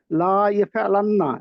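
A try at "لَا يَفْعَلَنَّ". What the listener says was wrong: লাম টান হবে না।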